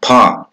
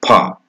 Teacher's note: But in Indian language, we have pa, for example. Here, pa is an aspirated plosive sound.